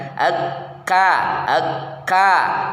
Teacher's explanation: akbar ak ak nah ini m namanya kemudian yang berikutnya posisi lidah merendah istifal dan infitah lidahnya merendah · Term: Kaf